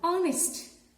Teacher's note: Because the letter H is silent in this word. The opening sound of this word is a vowel sound